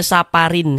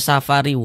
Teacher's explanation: Tapi dibaca safariu. Masuk melebur ke huruf wau. Kemudian didengungkan. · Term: idgham bighunah